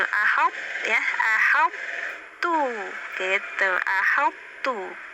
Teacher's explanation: kalau to itu idbak, kalau ta itu infitah tipis ya. Ya jadi ahab tuh ahab tadinya tebal ya, to ahab tuh, nah tuh-nya tipis, lo to tebal, ahab ya, ahab tuh gitu, ahab tuh.